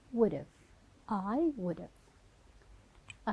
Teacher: So in here, instead we were saying would have, it will be would've. Only the v sound from the whole have. Take out the h sound, shorten the vowel from a into a, and we will say would've.